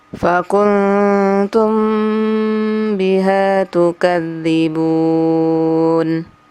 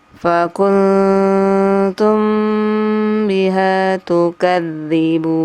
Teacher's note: Apabila nun sukun bertemu dengan huruf ta, maka dia jadi ikhfa. Jadi ditahan 3 harokat